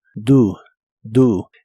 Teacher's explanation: El auxiliar do lo pronuncias como si la O fuese una U.